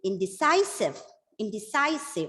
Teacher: the stress is given on the third syllable · It's a word with 4 syllables, so either the second or the third has to be stressed. So here the stress is given on the 3rd syllable